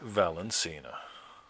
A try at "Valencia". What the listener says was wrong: There's no N after the I before the A. The Valencia oranges.